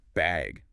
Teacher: they might ask, do you need a bag or even just bag with a rising tone